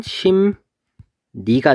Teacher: 받침 미음 이응 뒤에 연결되는 리을이 니은으로 발음된다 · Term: 비음화